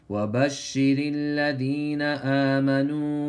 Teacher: That's مد الأصلي Stretch it one alif